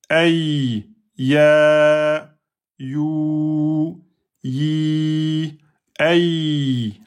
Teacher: C'est toujours le milieu de la langue avec le milieu du palais. La différence se joue sur le contact entre les deux. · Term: lettre Ya